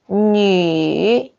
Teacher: So this is the third tone, going down, going up.